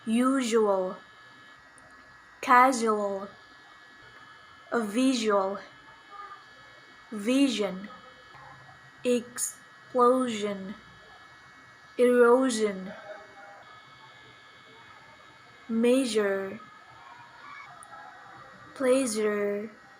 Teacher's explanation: voiced palato-alveolar fricative sound j